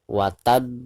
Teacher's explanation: ada di ujung ayat atau ada di ujung bacaan ya jadi cara membacanya harus di pantulkan dengan suara pantulan yang lebih besar wattab jadi sambil ditasydidkan disertai dengan pantulan yang lebih keras ya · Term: qolqolah kubro